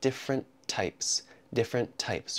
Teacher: We connect the two T sounds together.